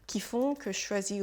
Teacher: le je et le che deviennent presque le même son